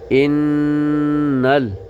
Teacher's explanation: زیر ان نون لام زبر نل یہاں بھی نون مشدد ہے نون مشدد میں بھی غنہ ہوتا ہے یعنی نون کے آواز کو ناک میں مکمل چھپاتے ہیں 1 سیکنڈ کے برابر